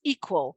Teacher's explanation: line equal so there we've got the stress of our two-syllable word on the first part